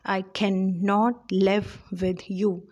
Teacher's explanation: i is unstressed can is stressed unstressed stressed and then not is unstressed live is stressed with is unstressed you is stressed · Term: iambic meter